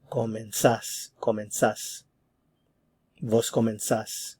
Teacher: And notice there's no stem change here. So comenzas. The stress is on the last syllable.